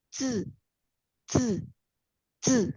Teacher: ketika huruf Z, C, S bertemu dengan huruf I dengan nada apapun, dengan nada 1, nada 2, nada 3, atau nada 4, maka bunyi I bukan lagi I, melainkan E